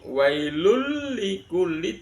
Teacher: wailul likulli dimasukkan dengan tidak mendengung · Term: idgham bila gunnah